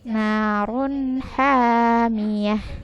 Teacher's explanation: Na panjang 2 harokat, ha panjang 2 harokat.